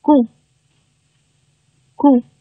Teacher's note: 但是这个▁“k”▁在元音▁“u”▁之前，我们要收掉送气 。对吧，气不要出那么多啊，所以是▁gu▁gu。▁但是第二个啊，前面是字母▁z▁啊，▁z▁在▁ou▁的字母组合之前，它读这个浊辅音了▁ng▁ng，▁所以呢你读的时候声带震动要强烈一些▁gu▁gu。▁所以一个是咕，一个是咕，这两个是不一样的。那咱们听的时候啊，比如说你听外国人说话，除了是通过语义去判断，通过这个一句话的意思哈，语言环境去判断它到底用的是哪一个词儿之外，如果刨去这些，你在考试当中啊，有这个咱们以后要